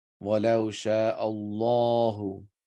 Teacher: The sound of Allah would be thicker.